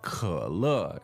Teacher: 可, third tone, and 乐, fourth tone.